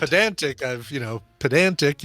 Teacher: you obviously put the emphasis on the middle syllable